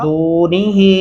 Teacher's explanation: दो अल्फी मद्दा है, इसके ऊपर दो अलिफ के बराबर लंबा करेंगे इसको